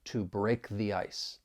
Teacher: we're going to use that strong form the because the next word begins with a vowel sound